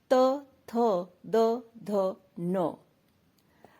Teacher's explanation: त, थ, द, ध, न दंतीय कहे गए हैं क्योंकि इनका उच्चारण के समय जीभ दांतों से लगती है।